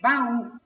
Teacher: o encontro de duas vogais pronunciadas em sílabas separadas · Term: hiato